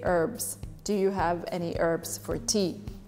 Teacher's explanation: So there is no H at the beginning of this word.